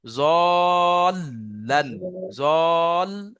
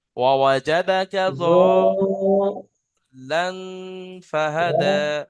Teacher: লামের উপর তাসদিদ আছে, তাসদিদ দুবার উচ্চারণ করতে হবে। জলান, জল, এই যে জ, টানের শেষে লাম যোগ করতে হবে।